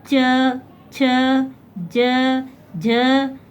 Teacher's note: च वर्ग, जब च वर्ग का जो भी उच्चारण वर्ण करेंगे वो जब उच्चारण करते तो हमारी जीभ जो है वो कहाँ पे, ऊपर जो हमारे ऊपर वाले दांत के बगल में जो तालु है, जो आगे का तालु, वहाँ पे जाके टच होता है, इसलिए इसको कहते हैं च वर्ग, यानी तालु पे जो होता है वर्ण कहते हैं।